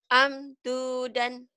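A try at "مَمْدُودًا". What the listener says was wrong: Emang ini? Ini mam ya.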